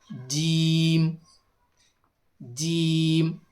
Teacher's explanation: जुबान का दरमियानी हिस्सा जब ऊपर के तालों से लगे तो जीम अदा होता है। इसे जरा मजबूती से अदा करें। · زبان کا درمیانی حصہ جب اوپر کے تالو سے لگے تو جیم ادا ہوتا ہے